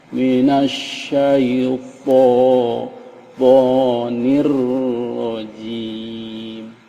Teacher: Jim ya, enggak pakai angin. Bukan Z ya, tapi J. Seperti pada huruf J atau J bahasa Indonesia atau J bahasa Inggris.